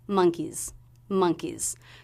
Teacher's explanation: the S will be a z sound Z because the sound before was a vowel monkeys monkeys so just a very quick soft z sound at · Now here we're making monkey plural, so the S will be a Z sound, Z, because the sound before was a vowel